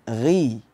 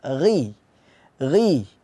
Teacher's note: makhrajnya berada di tenggorokan paling atas gii nah kemudian dia harus ada suaranya